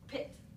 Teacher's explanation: you feel a burst of air